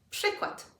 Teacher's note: We have an RZ, but it becomes a sh.